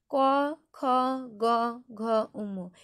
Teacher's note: ক, খ উচ্চারণের সময় জিনিসটা কণ্ঠ বা জিহ্বামূলীয় জায়গা থেকে উচ্চারিত হচ্ছে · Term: জিহ্বামূলীয় বর্ণ